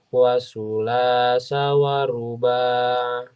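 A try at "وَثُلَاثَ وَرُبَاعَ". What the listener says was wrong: Catatan untuk hurufnya. Huruf sa. Sa keluar lidahnya sama dengan za. Wasu. Su. Wasulasa wa ruba'a.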